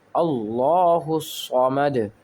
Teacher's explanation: یہاں پر اگین دال کو ساکن کر دیں گے اور آخر میں قلقلہ کریں گے، آواز لوٹتی ہوئی نکلے